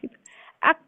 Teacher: Ak syiddah dulu baru ada aliran udaranya. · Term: huruf kaf